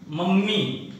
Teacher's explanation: मम्मी, तो यहाँ पर दोनों म एक साथ में आ गया। म पे थोड़ा सा जोर पड़ता है ना, इसे हम द्वित्व व्यंजन कहते हैं, क्योंकि दो व्यंजन एक साथ में आ गए।